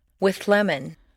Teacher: see how the TH moves back and the L moves forward to meet in a new middle position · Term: composite sound